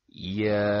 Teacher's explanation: Ketika huruf ya bertemu dengan alif sukun yang berharokat fathah, maka mulut terbuka dengan tanpa berlebihan. Posisi lidah dalam keadaan normal ataupun tidak terangkat, dan pita suara bergetar. Sehingga dengan keadaan tersebut, keluarlah huruf alif mad pada huruf ya yang dipanjangkan tersebut.